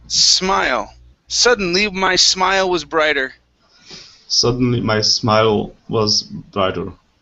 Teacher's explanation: smile instead of smile with a Z sound or a voiced S. This is an unvoiced S.